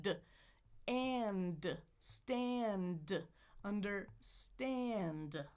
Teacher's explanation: Tongue goes up. Air out the nose. Then explode.